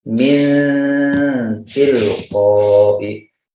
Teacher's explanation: jelas tidak min, juga tidak hilang langsung ke tak, min tilqo, tidak juga seperti itu, jadi samar, min muncul gunnah, sehingga kalau gunnah itu efeknya adalah harus panjang. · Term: ikhfa